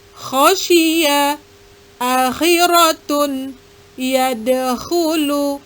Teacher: Bunyi huruf kho adalah seperti bunyi H, namun lebih maju ke ujung tenggorokan. Dalam translate ketulisan Indonesia disimbolkan dengan huruf KH.